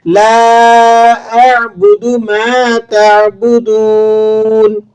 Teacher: لا اعبدو، میم کے بعد الف ہے، 1 الف تک کھینچ لیں گے اس کو، تعبدون، عین کو آپ صحیح مخرج سے ادا کریں گے اور دال کے بعد واو ہے، اسے 1 الف تک کھینچ کر ادا کیا جائے گا